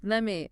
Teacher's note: The T in let changes or disappears before the M.